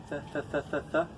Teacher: Look at my tongue. I'm putting my tongue between my teeth. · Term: TH sound